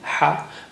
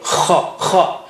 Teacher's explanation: It's not in ha, it's soft and easy, ha, but kha is strong, has a strong airflow.